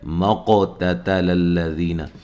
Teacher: قاف کو موٹا ادا کرنا ہے اور ہلا کے پڑھنا ہے۔ اچھا، آگے باریک پڑھنا ہے، تَتَلَ الَّذِينَ، سب کو باریک پڑھنا ہے، ذی یا مدہ ہے، نون کو لمبا نہیں کرنا۔